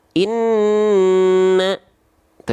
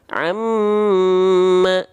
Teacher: Nun dan mim bertasdid dia ditahan dua harakat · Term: gunah